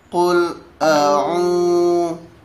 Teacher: Qul di situ apabila ada domah maka pengucapannya ya ini dengan memonyongkan daripada mulut kita.